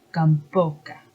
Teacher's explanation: So the mouth in Spanish is boca. When it encounters a nasal sound, m, it remains b, so it's gamboca. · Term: stop b